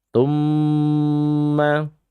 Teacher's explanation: Thumma disebut dengan gunnah musyaddadah. Dan mim ini adalah maudhi'us syafatain, kelompok atau yang keluar dari 2 bibir. Dan dia kalau kita bicara sifat, sifatnya adalah tawassut, pertengahan.